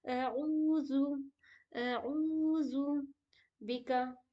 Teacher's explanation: عین کی آواز عین جیسی آنی چاہیے جو کہ حلق کے بیچ والے حصے سے نکلتی ہے